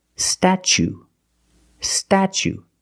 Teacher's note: the T is pronounced ch, like chicken and change